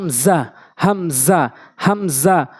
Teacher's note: হামজা হলকার শুরু থেকে উচ্চারণ হয়